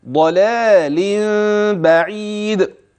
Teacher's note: ولاحظ الضاد المفخمه واللام بعدها مرققه · كان في ضلال بعيد، ها هي اللام مرة ثانية انتبه ولاحظ حرف المد الواقع بعد اللام الأولى في كلمة ضلال، ولاحظ الضاد المفخمة واللام بعدها مرققة. هكذا: ضلال بعيد.